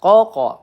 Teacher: Qoqo qalqalah sugro ya kita pantulkan.